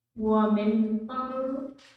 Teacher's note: the raw goes straight to the noon, and the middle one becomes silent letters. That's why there's no vowels on them.